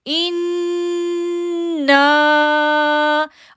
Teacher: ان کو 2 سیکنڈ کے لیے کھینچا اور نا کو 3 سیکنڈ کے لیے، کیونکہ اس کے اوپر جو ہے وہ مد آ گئی۔ · نون تشدید پہ ہم نے غنہ کرنا ہے۔ ان، نون الف زبر نا، ان نا۔